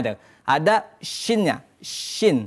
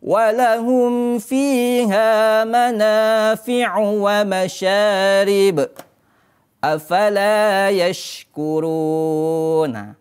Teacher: huruf syin ini makhrajnya ataupun letaknya itu di tengah-tengah lidah di tengah-tengah lidah dan setempat dengan huruf ya dan juga huruf